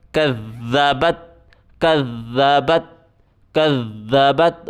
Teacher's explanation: ذال کے اوپر زبان باہر نکالیں، سختی کے ساتھ پڑھیں